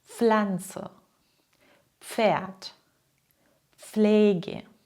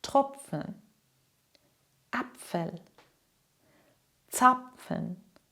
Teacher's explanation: Dieser Laut besteht aus zwei Teilen, P plus F. Das heißt, du sprichst zuerst ein kleines P und danach direkt ein F